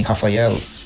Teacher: lamed lamed é o equivalente ao l no nosso português Porém quando ele aparece no final das palavras a pronúncia dele seria mais parecida com o l no português de Portugal né como em Rafael você coloca a língua bem no céu · você coloca a língua bem no céu da boca para falar, diferente do português, que normalmente ele soa como U